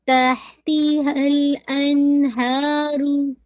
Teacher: ہا کو واضح کیجیے گا ہمس کے ساتھ